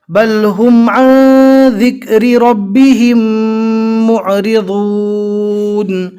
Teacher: ذال کو اچھے سے پڑھے، زبان کا کنارہ دانتوں کے باہر نکالیں گے تو انشاءاللہ آسانی کے ساتھ ذال ادا ہو جائے گا۔ اس کو زا نہیں پڑھنا، زا اور ذال میں فرق کرنا ہے۔